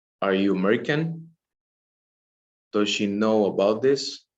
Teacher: And for rising intonation, as the name saying, rise. So the rise, the pitch of the voice is at the end. And we use this kind of intonation for just no questions, okay?